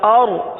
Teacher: آگے حمزہ را زبر اور، اور را کے لیے زبان کو اٹھائیے، را کو پر پڑھیں گے، کیونکہ را ساکن سے پہلے زبر یا پیش آ جائے تو را کو پر پڑھا جاتا ہے، لہذا اس را کو پر پڑھیں گے.